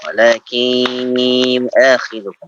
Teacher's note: Ditahan lagi idghamnya, Pak. Idgham bi gunnah.